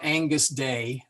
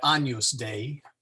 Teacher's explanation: they kind of mush them all together and it kind of comes out like an NY sound, like in Canyon